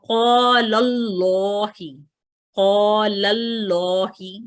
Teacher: इसको हम अल्लाह के नाम अल्लाह और अल्लाहुम्मा, ये अल्फाज जब आते हैं अल्फाज कुरानिया में तो लाम जो मुशद्दद लाम है, इसमें मौजूद मुशद्दद लाम पे अगर पिछले हरफ पे, जैसे लाम के ऊपर फतहा है, यहाँ फतहा है लाम के ऊपर, ये फतहा जो है ये मजबूर करता है या डायरेक्ट करता है इस मुशद्दद लाम को कि इसको मोटा पढ़ा जाए। सो क़ालल्लाहि, क़ालल्लाहि, ये लाम मशरूत पढ़ा, मोटा पढ़ा जाएगा।